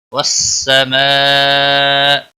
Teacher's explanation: مد متصل ہے، 5 الف کے برابر کھینچ کر پڑھیں گے